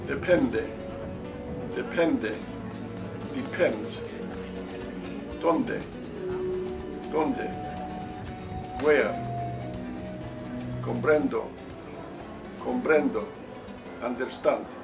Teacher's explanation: it sounds like the letter D in English when it follows the letter N or the letter L.